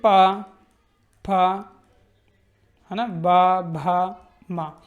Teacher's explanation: पा वर्ग जो है ये बोला जाता है होठों से, यानी ओष्ठ से